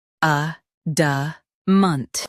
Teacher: Both US and UK have the same pronunciation of this word. Stress a. Keep da and munt soft.